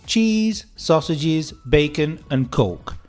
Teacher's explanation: Every word, the intonation rises apart from the last one. This is so that we understand that you finished your list.